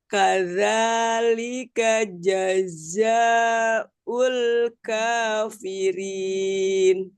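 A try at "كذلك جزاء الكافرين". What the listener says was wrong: Diulang. Jaznya kurang panjang za-nya. Jazaul.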